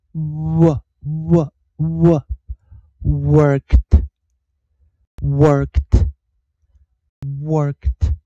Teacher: 老师念的是长元音啊，长儿音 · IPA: [ɜ˞kt]